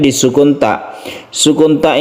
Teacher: kita menghembuskan nafas sedikit ya sehingga timbullah suara Es tapi sedikit saja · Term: sifat hams